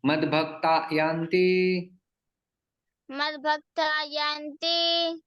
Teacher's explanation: यहाँ पर विसर्ग का लोप हो जाता है।